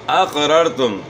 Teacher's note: قاف جو ہے موٹے حروف میں سے ہے، آپ نے قاف کو موٹا ادا کرنا ہے، اور پہلی را دوسری را جو ہے نا ان کو آپ نے موٹا پڑھنا ہے۔